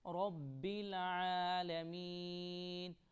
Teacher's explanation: عین کو تھوڑا لمبا کریں گے کیونکہ اس کے اوپر کھڑی زبر ہے اور یا پر جزم ہے، اس لیے جب میم کو یا کے ساتھ ملائیں گے تو تھوڑا کھینچ کر ملائیں گے۔